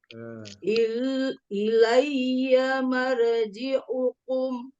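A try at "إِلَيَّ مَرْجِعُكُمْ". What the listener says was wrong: Tafkhim roknya jangan mar. Ilayya ya tasdid Ilayya bertasdid, ya-nya bertasdid apa? Tasdid itu yang musyaddah. asliyah.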